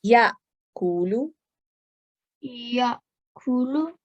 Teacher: So this Hamza Sakin needs to be read with soft jerk.